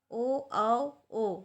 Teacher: ये स्वर ओष्ठ कंठ में आते हैं। कंठ से और होंठ से बोला जाता है।